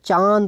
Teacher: चांद बोल के देखिए तो नाक और मुंह दोनों से जो है वायु यहां पर निकलती है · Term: अनुनासिक